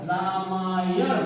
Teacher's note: अब देखिए, यानी इसको अगर हम संधि के रूप में अगर बनाते हैं तो अ प्लस अ दोनों मिलके आ बन गए